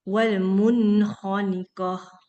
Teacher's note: Suara nunnya harus jelas. Karena dia izhar